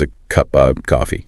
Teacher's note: And look at the strong form is ov, but the weak form shrinks down to uh or sometimes just a tiny v sound